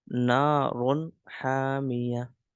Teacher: Izhar mean we will not do ghunna. We will not do ghunna at this portion.